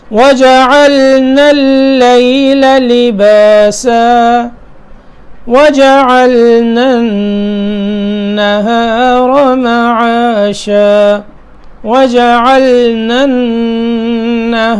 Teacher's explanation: وَجَعَلْنَا اللَّيْلَ لِبَاسًا وَجَعَلْنَا النَّهَارَ مَعَاشًا وَجَعَلْنَا النَّهَارَ عین کے بعد لام پڑا، ٹھیک ہے، نون کو نون سے ملایا، آگے النہار ہا باریک ہے ٹھیک ہے، اور را جو ہے یہ موٹا حرف ہے